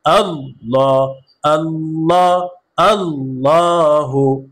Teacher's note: লামের উপরে খারা জবর আসার কারণে এক আলিফ টান হবে